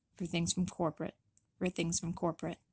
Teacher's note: Because the viewer already knows that the fax is from corporate, so there's no need to emphasize that again. Notice the schwa R in the reduction of for to fur, as well as the stop T at the end of corporate, and try to match the quick pace of the line.